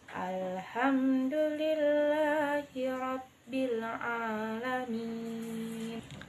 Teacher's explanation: kesalahan yang sering terjadi adalah ketidaksempurnaan pengucapan huruf ain tanpa penekanan pada alamin sehingga dibaca seperti alif atau a biasa